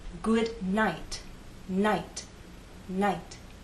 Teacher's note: You should feel the puff of air on your fingers. Now, when T is at the end of a word, for example in good night, night, night, there is a puff of air, but it's very weak. It's not as strong as the puff of air at the beginning of the word.